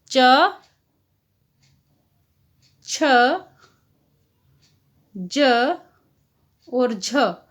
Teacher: च वर्ग के प्रथम 4 व्यंजन कौन सी श्रेणी में आएंगे? स्पर्श संघर्षी व्यंजन की श्रेणी में आएंगे।